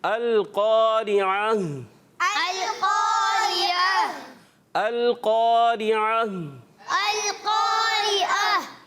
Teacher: इसमें क़ाफ़ हुर्फ़ मुस्तालिया से है तो इसको मोटा पढ़ेंगे। · आइन हलक के दरमियान वाले हिस्से से और हा हलक के नीचे वाले हिस्से से।